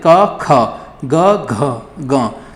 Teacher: का की अपेक्षा अधिक बल लग रहा है किस पर, खा पर। गा की अपेक्षा अधिक लग रहा है घा पर। · पहला, तीसरा और पांचवा जो वर्ण है ये आपके कम जोर के साथ उच्चारण हो रहा है इनका, तो ये हो जाएंगे अल्प प्राण, और दूसरा चौथा बचा ये हो जाएंगे आपके पास क्या, महाप्राण।